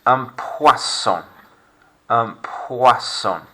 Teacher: That's oi in English, isn't it? But wa sound in French.